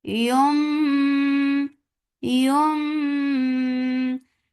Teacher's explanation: So this has changed into meme, so you when you are attaching with meme you are giving gunna too because iqlab takes gunna too. So give gunna, keep your sound in your nose for a little longer